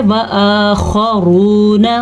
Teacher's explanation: خا کو پر پڑھنا ہے اور را کو بھی پر پڑھنا ہے، واو مدہ ادا کرنا ہے۔